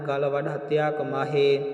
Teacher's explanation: ਸੋ ਇਸ ਨੂੰ ਗੱਲ ਨੂੰ ਪੋਲਾ ਬੋਲਣਾ ਹੈ ਅਧਕ ਨਹੀਂ ਲਾਉਣੀ ਜੇ ਆਪਾਂ ਅਧਿਕ ਲਾਵਾਂਗੇ ਫਿਰ ਗੱਲਾਂ ਦਾ ਵਾਚਕ ਆ ਜਾਵੇਗਾ ਤੇ ਜੇ ਆਪਾਂ ਅਧਿਕ ਤੋਂ ਬਿਨਾਂ ਬੋਲਾਂਗੇ ਫਿਰ ਆਪਣਾ ਜਿਹੜਾ ਗਲ ਹੁੰਦਾ ਹੈ ਉਸਦਾ ਵਾਚਕ ਆਵੇਗਾ।